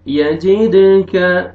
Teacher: दाल पे कलकला double sound आएगा